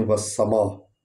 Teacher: تو دیکھیں والسماء کہ وا اور سین کو اکٹھے پڑھنا ہے کیونکہ سین پر شد ہے، سیٹی کی آواز نکلنی ہے، اور میم الف ما کو پر پڑھنا ہے اور لمبا کرنا ہے کیونکہ اس پر مد ہے۔